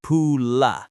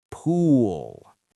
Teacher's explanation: It shouldn't have that uh release. It should be a deep rumble. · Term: dark L